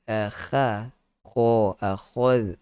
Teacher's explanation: Akhad itu kha, kho, khol. Khol tebalkan. Isti'la di situ. Ada sifat isti'la.